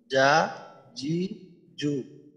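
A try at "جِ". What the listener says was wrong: হ্যাঁ, জেরে কি একটু বের হয় কিনা হ্যাঁ, তো এটা ঠিক করতে হবে। তো জিহ্বার মধ্যখান উপরের তালুর সাথে লাগাবেন, লাগানোর পর জি, জি, জি, জিম জের, জি, জিম মিনাশ শাইতানির রাজিম, রাজিম। এখানে জিম এই ধরনের না হয়, জিম, রাজিম, শাইতানির রাজিম, জি।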